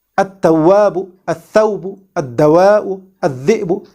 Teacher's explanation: when we merge this lam sakina into the harf shamsi, this merger results in stressing or emphasizing of this harf shamsi. · In fact, we assimilate or merge it into the sun letter, like at-tawwabu, at-thawbu, ad-dawa'u, ad-dhi'bu, so on and so forth. This merging of the lam sakina of al into the sun letter is called idgham shamsi, and the lam sakina which is merged is called lam shamsiyya.